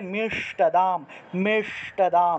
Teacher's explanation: মূর্ধা দিয়ে উচ্চারণ করতে হবে, জিহ্বাটা উল্টিয়ে স উচ্চারণ করতে হবে, জিহ্বা উল্টিয়ে।